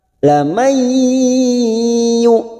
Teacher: nun sukun bertemu ya idgham bi gunnah, siap masuk ke huruf ya dan ditahan 3 harokat